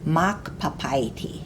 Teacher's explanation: you have to say the first part louder because of the accent mark over the first a Mach papayati the next one is a word we have meaning